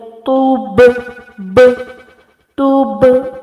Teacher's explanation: Ba is the qalqala letter, so we will make it very prominent